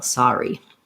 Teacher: The R just goes on the second syllable in that. There's no R influence on that vowel.